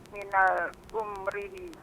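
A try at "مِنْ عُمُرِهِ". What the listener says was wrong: Tidak ada alnya. Min umrihi.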